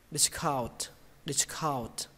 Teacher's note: Discount kết thúc bằng âm n và âm t nhé. Nhưng mà âm t nó quan trọng hơn nên các bạn cứ bắn hơi nó ra. Âm n này thì lướt qua cũng được.